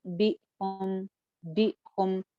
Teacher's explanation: حمزہ ساکن ہے تو لہٰذا آواز جو ہے وہ ایک جھٹکے کسی فیلنگ کے ساتھ آئے گی